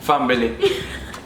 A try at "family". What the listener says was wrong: Where the bee come from? Family.